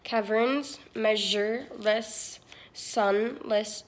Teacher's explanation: every line has at least one sibilant hissing sound in it